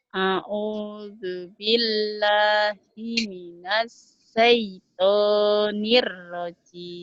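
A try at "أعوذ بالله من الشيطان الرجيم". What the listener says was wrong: Sinnya mana? A'udzu billahi minasy gitu. A'udzu billahi minasy. A'udzu billahi minasyaitonir rajim. Gak apa-apa hutang sin ya.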